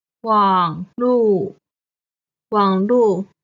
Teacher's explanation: 网 is the third tone. 路 is the fourth tone.